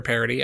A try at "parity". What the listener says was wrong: You said parity, not parody. Gender parity.